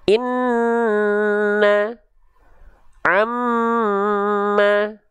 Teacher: Nun dan mim bertasydid ditahan 2 harokat.